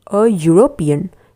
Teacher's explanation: It's not the typical E vowel sound, but actually it's the Y sound for European.